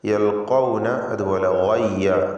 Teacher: ഒന്നിൽ ഖാഫ്, മറ്റേതിൽ ഗായിന് ഇസ്തിഅലാൻ്റെ തഫ്ഖീം ചെയ്ത് ഉച്ചരിക്കേണ്ട 2 അക്ഷരങ്ങളാണ്.